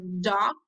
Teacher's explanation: This is a stop sound, and you can feel your throat vibrate · Regarding the place of articulation, the tip or the blade of the tongue articulates with the alveolar ridge, and it describes as a pico-alveolar or laminal, depending on the part of the tongue which participate in the articulation. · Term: voiced sound